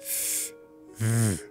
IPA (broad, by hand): θ ð